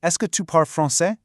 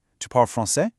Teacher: But if you step out onto the streets of Quebec or Paris, what you'll actually hear is the super casual, intonation-only method. People just say a normal statement and pitch their voice up at the very end.